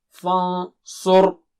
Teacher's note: Noon sakina is followed by sa, which is sad, which is very thick and high. So noon sakina also will be thick and high.